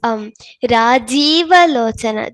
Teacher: in the first pankti, it is Rajiva Lochana. There is Dirgha in Jakara.